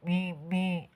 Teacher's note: sifat gunah G gunah ya jadi ee keluar dari rongga hidung